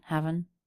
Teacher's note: And then with that break, he does pronounce his H, he does pronounce the V, he fully pronounces the word have. Haven, connecting the V into the schwa of the word an